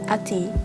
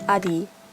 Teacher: unvoiced consonants between voiced vowels become a lot easier to pronounce in rapid speech when they're also voiced. T might become D, P might become B, S becomes Z, and F becomes V, for example. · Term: Assimilation